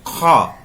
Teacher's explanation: ख जो बोलते हैं ना, तो वैसे भी उष्म है, यानी संघर्षी है, संघर्ष से आता है। लेकिन ये भी कवर्ग है, ये भी कंठ से ही बोला जाता है, पूरे कवर्ग का है। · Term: नुक्ता वाला